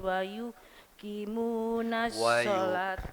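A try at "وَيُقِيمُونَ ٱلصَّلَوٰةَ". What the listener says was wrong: wa yuqimunas shalah. Kalau di ngapunten, kalau diwakafkan diberhenti tak itu jadi nanti tak marbuta jadi hak bunyinya nggih. Wa yuqimunas shalah. Shalah. Jadi hak. Iya, nggih hak.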